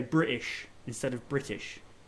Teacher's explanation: one thing that I don't like when I hear a lot of British people, they drop the T.